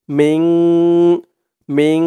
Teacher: ইফা মিম দিয়ে এই নুন ধরবে ইকফা গুন্না হবে এখানে কারণ নুন সাকিনের পরে ইকফার 15 হরফের এক হরফ সিন আসছে তাই এখানে এই নুন সাকিন টাকে গুন্না করে পড়তে হবে মিং মিন এমন গুন্না হবে সু চার আলিফ টান হবে মধ্যে